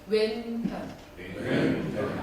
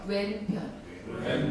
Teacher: 왼자 발음하실 때 니은 받침은 혓바닥을 윗니빨 뒤쪽에 붙였다가 내려오시면 돼요. 왼 할 때는 혀 끝을 치아에 대셔야 돼요. 완전히 힘있게.